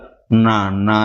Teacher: நாக்கின் நுனி அன்னத்தின் நுனியை பொருந்துவதால் பிறக்கிறது நாக்கின் நுனி அன்னத்தின் நுனியை பொருந்துவதால் நா அநா என்று பிறக்கிறது இறுதியாக தமிழுக்கே உரிய சிறப்பு ழகரம் மேல்வாயை நாக்கின் நுனி வருடுவதால் பிறக்கிறது மேல்வாயை நாக்கின் நுனி வருடுவதால் பிறக்கிறது. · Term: மூன்று சுழி நகரம்